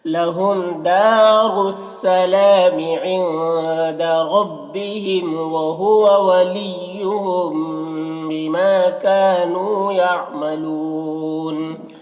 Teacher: وہو ولیہم یہاں پر میم ساکن کے بعد با ہے تو اخفاء شفوی بھی ہوگا، غنہ اور اخفاء کے ساتھ پڑھیں گے۔ بما میں الف مدہ ہے، کا میں بھی الف مدہ ہے، نون میں واو مدہ ہے، یہ سب کو ایک الف کے برابر کھینچیں گے۔ یعملون یہاں پر وقف کی صورت میں مد عارض وقفی ہوگا تو اس طرح سے پڑھیں گے۔